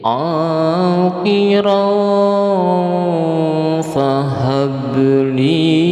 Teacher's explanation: Nah, ini tanwin berupa fathatain bertemu dengan huruf fa, ini ikhfa hakiki, jadi bacanya harus disamar-samarkan dan didengungkan. Agak didengungkan sedikit.